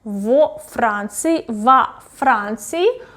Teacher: So you probably noticed that here it's not preposition в, it's во, because the next word, the next noun starts with f plus consonant. So it's difficult to pronounce в Франции, that's why we add o.